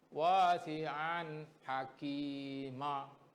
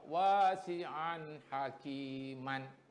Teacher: Kalau nun mati, kita berhenti pun kena bunyi nun mati, kita wakaf Kita buat wakaf atau berhenti pun bunyi nun mati, kita wasal atau sambung pun kena bunyi nun mati. Tetapi kalau tanwin, kalau berhenti dia tak jadi nun, tak nampak dah, tak jelas nun mati itu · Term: waqaf